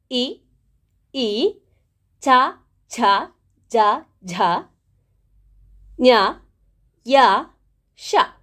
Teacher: ಇವುಗಳನ್ನ ನಾವು ದವಡೆಯ ಸಹಾಯದಿಂದ ಹೇಳುವಂತಹ ಕಾರಣ ಇವುಗಳನ್ನ ತಾಲ್ವಾಕ್ಷರ ಅಂತ ಹೇಳಿ ಕರೀತೇವೆ